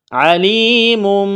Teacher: یا ساکن سے پہلے زیر ہے، حروف مد آیا ہے، ایک الف کے برابر اس کو کھینچنا ہے